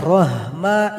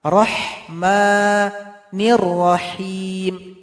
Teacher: Tidak boleh rahma, itu salah. Ini ha tipis yang pedas. Keluar dari tengah tenggorokan.